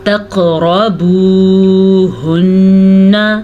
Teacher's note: قاف کو پر پڑھیں گے، قاف حروف مستعلیہ میں سے ہے اس لیے پر پڑھا جائے گا۔ را کو پر پڑھیں گے، را کے اوپر زبر ہے اس لیے، اگر زیر ہوتی تو ہم را کو باریک پڑھتے، پیش اور زبر سے را پر پڑھی جاتی ہے۔